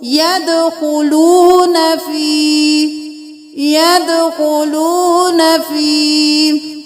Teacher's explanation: واو ساکن ہے، اس سے پہلے والے حرف پر پیش ہے تو یہ واو مدہ ہو گیا. ایک الف کے برابر کھینچ کے پڑھیں